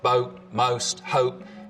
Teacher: starts with the tongue further forwards in the mouth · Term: goat fronting